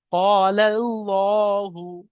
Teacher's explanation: এই আল্লাহ শব্দের আগের অক্ষরে এখানে জবর আছে, তাই এখানে আমরা পুর করে পড়ছি, অর্থাৎ ল পড়ছি